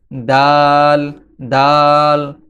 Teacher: দাল হরফটি জিহবার আগা সামনের উপরের দুই দাঁতের গোড়ার সঙ্গে লাগিয়ে উচ্চারিত হয়। দাল দাল। জিহবার আগা সামনের দুই দাঁতের গোড়ার সঙ্গে লেগে দাল উচ্চারিত হয়।